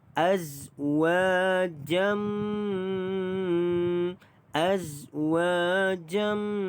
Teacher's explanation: Baik, azwa dibaca dengan 2 harakat kerana mad asli huruf alif. Azwa jam, tanwin ini bertemu dengan huruf mim, idgham ma'al ghunnah, masuk dan dengung 2 harakat.